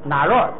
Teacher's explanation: 本来是平声哪若，结果他这个平常人们说话的时候啊，就比较哪若，就好像有点降调的那意思似的